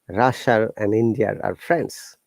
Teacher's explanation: That is the typical R, we call it intrusive R in British IPA.